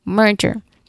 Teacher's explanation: Pronunciation wise, the focus is on mer right on the first syllable.